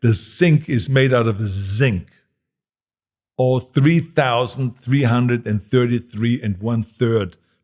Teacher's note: in Austria or in Germany you say 3,333 with the S rather than with the TH, because we don't have the TH sound